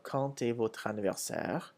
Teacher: When quand comes before a vowel, such as in quand, the D changes to a T sound